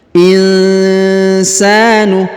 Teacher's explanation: nun sukun bertemu sa, maka kita dengungkan dan kita samarkan. Insanu, kemudian huruf sa-nya dipanjangkan 2 harokat karena di depannya terdapat alif.